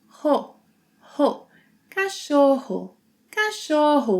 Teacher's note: And whenever the R is doubled, the most standardized way to pronounce it in Brazilian Portuguese is in the back of our throat, just like the H sound in English